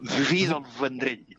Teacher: És la consonant fricativa labiodental, tècnicament.